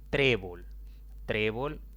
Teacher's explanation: trébol es una palabra de dos sílabas la mayor intensidad cae en la penúltima sílaba